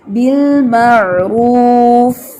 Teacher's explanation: فا کے اندر آپ کا ہمس کم تھا